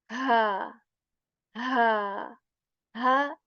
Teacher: the ha that comes from the throat and especially from the portion of the throat that is near to the to our chest